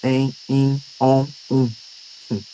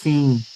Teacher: acontecem quando o ar sai pelo nariz, né, e pela boca ao mesmo tempo. Sai pelo nariz e sai pela boca ao mesmo tempo. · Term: sons nasais